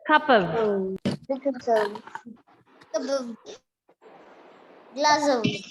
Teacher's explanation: Sometimes the off can give you a v sound